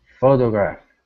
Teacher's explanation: Stress at the very beginning.